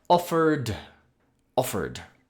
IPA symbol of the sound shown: d